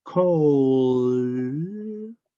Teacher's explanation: D, porque vibra harto